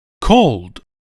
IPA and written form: koʊld (cold)